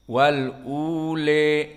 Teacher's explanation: madhabnya mad tabi'i di sini pada le dibaca dengan al-imalah al-kubra. Le, adapun di depannya sama.